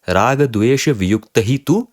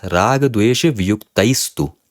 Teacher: the visarga, because there is a hard consonant following the visarga is replaced by a sakara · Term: sattva sandhi